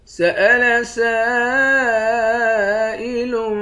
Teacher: سین کے بعد الف ہے، اس الف پر مد ہے، اس مد کو 5 الف کے مقدار کھینچیں گے